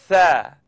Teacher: So it's the tip of my tongue coming up out at the edge of my top teeth. Now, I'd just like you to simply blow the air between your tongue and your teeth.